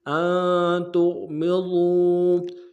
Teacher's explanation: تا کو غین کے ساتھ ملانا ہے، غین کو موٹا ادا کریں گے، میم کو نم سے ادا کریں گے. ضاد کو واو کے ساتھ ملانا ہے، موٹا ادا کرتے ہوئے، واو مدہ ایک الف دار میں کھینچیں گے